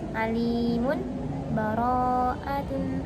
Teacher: Lalu yang keenam yaitu keadaan wasolnya akhir ayat surat Al-Anfal dengan permulaan surat Baro'ah dalam salah satu segi bacaan. Berdiam pada huruf mim dalam lafadz alimun dengan sakta latifah, kemudian dimulai dengan surat Al-Baro'ah.